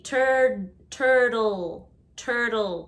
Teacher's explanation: Turtle, the second T is like a D, turtle, turtle.